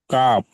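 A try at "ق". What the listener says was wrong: কাপ তিনারি টান দিয়ে বলতে হবে জি।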